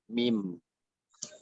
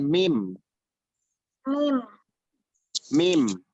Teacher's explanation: Jadi sifatnya jahar yaitu jelas, lantang, berkumandang, dan tidak ada hembusan angin yang keluar.